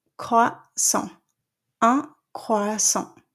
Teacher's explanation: you're not going to pronounce the T at the end of croissant